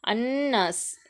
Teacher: சத்து பெற்ற நூன் வந்திருக்கு இந்த நூனை நம்ம அழுத்தி குன்னா செஞ்சு ஓதணும் அலிஃப்க்கு முன்னாடி ஜபர் வந்திருக்கு இரண்டு விரல்கள் நீட்டக்கூடிய அல்லது மடக்கக்கூடிய அளவு நம்ம · அன்னாஸ், இதில் சத்து பெற்ற நூன் வந்திருக்கு. இந்த நூனை நம்ம அழுத்தி குன்னா செஞ்சு ஓதணும்